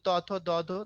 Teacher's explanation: আর দন্ত মানে দাঁত, দেখো এগুলো ত থ দ ধ দাঁতে উচ্চারিত হয় তাই এগুলোর নাম দন্ত বর্ণ